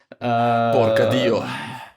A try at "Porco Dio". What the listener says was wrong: Porco, no porca. Con O.